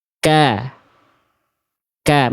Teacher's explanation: Cuman ketika harakat misalnya kafnya harakatnya fathah ka. Nah, ketika mengeluarkan vokal A, pangkal lidahnya turun.